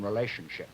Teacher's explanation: a very, if you will, tony pronunciation of this word, with this esh retracted as in relationship